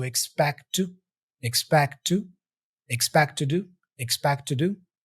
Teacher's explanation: The T for expect is even dropped. He doesn't say expect to do.